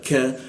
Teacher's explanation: Ka lidahnya diturunkan sehingga ada hembusan udara.